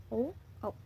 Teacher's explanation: कंठ और ओष्ठ यानी कि कंठ और होठ से स्पर्श करते हुए जो ध्वनि निकल रही है वो है ओ औ